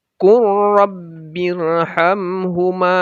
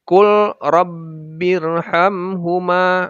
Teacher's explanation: Yang benar adalah kur. Jadi seakan-akan lamnya hilang, langsung masuk ke ra.